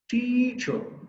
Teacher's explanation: we take extra force we take extra time also hence the stress mark is on the first syllable the second syllabus is very lightly altered the correct exact pronunciation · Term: stressed, stressed syllable